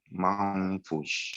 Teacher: Jadi mamfush, tidak ada lagi nun di sini. Nah, jadi yang ada hanya dengungnya masuk ke hidung, ke khoisyum, ke belakang itu. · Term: ikhfa